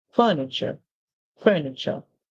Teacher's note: in English you can simply say the t r e makes the CH sound